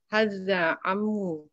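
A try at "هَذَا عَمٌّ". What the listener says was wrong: Haza amun ya. Tanwinnya jangan lupa ya.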